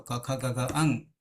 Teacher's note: ક ખ ગ અંગ એ પોત પોતાના સવર્ણ છે એ ગોત્રના છે કંઠસ્થાનના છે